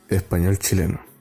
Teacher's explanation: I feel like he's dropping the S.